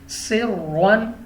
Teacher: اب را کے اوپر دو زبر کی تنوین ہے تو را کو پر پڑھیں گے